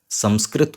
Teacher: अनुस्वार का जो एक खुद का ध्वनि है वह है मां अनुस्वार का बिंदु का खुद का ध्वनि मा है